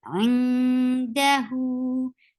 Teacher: You will not pronounce the sound of noon, and you are going towards the makhraj of the letter coming up, and that is dal, and you are keeping the sound in your nose, and this is what ikhfa is.